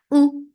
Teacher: for dhamma circular lips, the sound is short